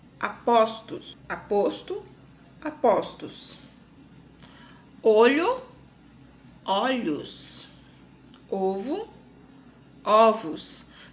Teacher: No singular, do plural com metafonia, o O sempre virá fechado, de avô, né? E no plural ele vai vir aberto. Ó, naquele ó de avó, ok?